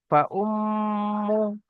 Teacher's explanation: মিমের উপর তাসদিদ এসছে, ওয়াজিব গুন্না, একালি পরিমাণ গুন্না করে পড়তে হবে। ফাউম্মু, হা উল্টা পেশ হু, উল্টা পেশ ওয়াও মাদ্দার মতো একালি পরিমাণ টান হবে।